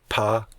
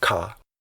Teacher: when you say pa, your lips press together, and that doesn't happen when you say ka